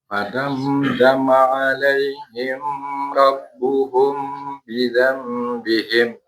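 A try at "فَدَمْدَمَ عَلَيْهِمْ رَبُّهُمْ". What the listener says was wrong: Hati-hati ya. Alaihim rabbuhum, mimnya masih sama banget. Mim yang pertama ada harokatnya kan? Ada sukunnya ditulis, berarti nggak ditahan. Tapi mim yang kedua ditulis nggak? Enggak kan? Berarti yang ditahan mim yang kedua. Jadi fadamdama alaihim rabbuhum bidzambihim.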